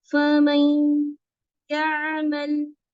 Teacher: ये दो गुन्ने जो इदगाम वाले हैं वो ज्यादा लंबे होने चाहिए